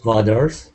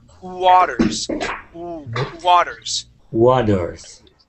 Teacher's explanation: I want you to start off the word with an oo, and then slide into that ah.